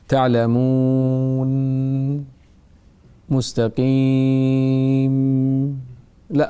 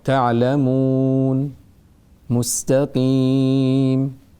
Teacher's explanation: النون والميم إذا وقفنا عليهما تكون ساكنة وفيها أصل الغنة